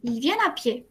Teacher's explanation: La T, de nuevo, no se pronuncia.